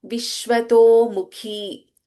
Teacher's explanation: Viraja, Vishwato Mukhi, Kha is Mahaprana.